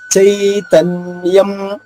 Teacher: చైతన్యం, చై చాకి ఐకారము, చైతన్యం నాకి యావత్తు, చైతన్యం అనుస్వరం ఉంది, దాని ఉచ్చారణ మాగా చెప్పాలి.